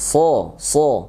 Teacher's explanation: So itu ujung lidah menempel ke gigi bawah. Nah, so. Dan ini hurufnya sifatnya tebal ya. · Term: huruf so